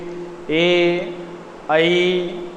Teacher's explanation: ए ऐ कंठ और तालु, कंठ पे तो जोर पड़ता है और जीभ तालु की ओर अग्रसित होती है, इसलिए इनका उच्चारण स्थान है कंठ तालु।